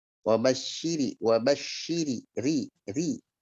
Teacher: ada huruf ro berbaris kasroh maka bacalah dengan tarqiq tipis.